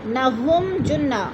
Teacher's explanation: میم ساکن کے بعد جیم آ گیا تو اظہار شفوی